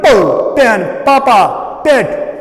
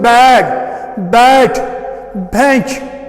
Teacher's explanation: The difference is only that this po, it is voiceless, while as this bo, it is voiced.